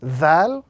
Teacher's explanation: the letter Dhal, is pronounced when the tip of the tongue touches the edges of the upper two front teeth